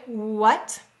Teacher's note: notice your mouth starts round and it pulls back all right so when we say what when do you feel